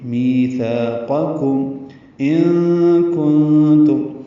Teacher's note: نون ساکن کے بعد کاف اور تا آنے کی وجہ سے دونوں جگہ اخفا ہے